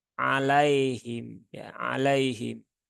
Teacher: Nah, kemudian ini adalah ya sukun sehingga bunyinya itu i ya. Pastikan betul bunyinya i karena masih banyak dari saudara-saudara kita yang membaca dengan vokal e.